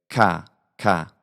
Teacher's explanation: just have to pronounce it like a normal initial K sound we have to make the vowel aa which is not a vowel in many varieties of English